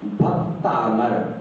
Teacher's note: भक्त के आ अमर के आ दोनों समान हैं और सवर्ण होने से भक्त के आ को दीर्घ हो जाता है, अमर के आ का लोप हो जाता है, भक्तामर शब्द तैयार हो जाता है।